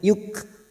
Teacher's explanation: kaf sukun yang memiliki sifat hamas